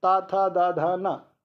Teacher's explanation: ता वर्ग दंत से बोला जा रहा है